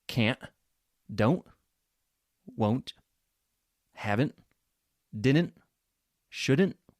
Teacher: yes the t is gone that t sound often goes away